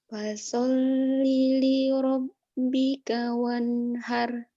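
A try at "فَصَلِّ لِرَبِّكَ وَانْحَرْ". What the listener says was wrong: Kurang tinggi sedikit. Fasolli li rabbika wanhar. Lepas, ayo. Jangan takut. Wanhar gitu ya. Kencengin ya. Fasal fasalli li rabbika wanhar.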